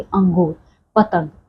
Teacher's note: इन अनुस्वारों का उच्चारण करते समय ना हमारी जो सांस होती है ना सिर्फ और सिर्फ हमारे नाक से निकलती है